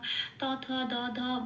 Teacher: ত থ দ ধ বলতে গেলে একটু দন্ত স্পর্শ হয়, তো এটাকে দন্তব্য স্বর বলে